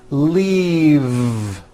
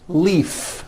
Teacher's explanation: This last word, leave, is very different from the word leaf, like from a tree, which has an unvoiced F. The word is leave with a voiced V.